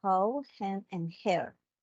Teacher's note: the H sound which is a voiceless glottal fricative